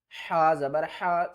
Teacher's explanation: ہا کو ہم نے حلقے درمیان والے حصے سے ادا کرنا ہے، یہ بھی حروف ہلکی ہے۔